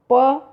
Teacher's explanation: इसी तरह से प वर्ग का लो, प अल्प प्राण है क्योंकि प को बोलने में हवा कम मुख से निकलती है